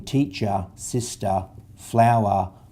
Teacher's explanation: in Australian accent er on the end generally says are